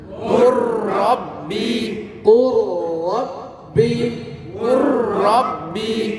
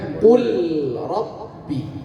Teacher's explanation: Maka secara makhraj dua huruf lam dan ra ini berdekatan, maka lam sukun diidghamkan ke ra, dimasukkan ke ra